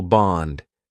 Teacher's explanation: Interestingly, in bond, he used a longer vowel sound,